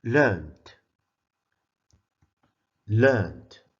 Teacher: The ed is pronounced as a d because it comes after a voiced sound. N is a voiced sound.